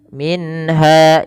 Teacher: jelaskan suara nunnya ketika bertemu dengan ha, karena ia izhar halki dalam ayat ini.